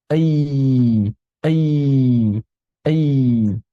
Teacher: Kalau rakhawah mengalir kemudian si udara itu kan istilahnya disaringlah di makhraj itu sehingga menghasilkan suara tertentu. Gara-gara si tengah lidah naik mendekat ke arah langit-langit maka laju udara berubah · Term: huruf ya